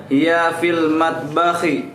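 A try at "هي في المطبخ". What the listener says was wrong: Jamil, Masya Allah.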